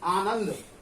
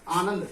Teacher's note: इसमें ना जो है बीच में ज्यादा बोला जा रहा है, आनंद, क्योंकि ये नौदा संयुक्त से पहले जो है ना, ये जो है इस पर जोर लगता है, आनंद नहीं।